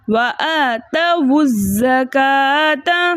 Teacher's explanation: تو ہم نے پہلے ساکن یعنی واؤلین جمع کو پیش دیا، حمزۃ الوصل درمیانے کلام میں آنے کی وجہ سے حذف ہو گیا، اور واؤلین جمع کے پیش کو ہم زا کے ساتھ ملا کر پڑھیں گے، ٹھیک ہے۔